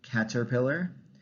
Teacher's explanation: the deletion of the first r is another interesting one